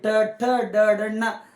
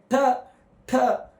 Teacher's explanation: ನಮ್ಮ ನಾಲಿಗೆಯ ಭಾಗ ಸುರುಳಿ ಸುತ್ತಕೊಂಡು ಏನಾಗ್ತದ ಮೇಲಿನ ಭಾಗಕ್ಕೆ ಟ ಠ ಟಚ್ ಆಗ್ತದ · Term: ಮೂರ್ಧನ್ಯಗಳು